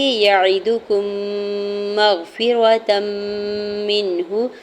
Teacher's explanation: یعدکم مغفرۃ منہ، یا کی زبر کو عین کی زیر کو دال کی پیش کو بغیر کھینچے ہوئے ادا کرنا ہے۔ کاف کی پیش کو میم مشدد کے ساتھ ملاتے ہوئے یہاں پہ میم مشدد پہ غنہ کریں گے